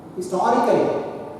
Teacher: Historical, 4 syllables. And stress is on the second syllable.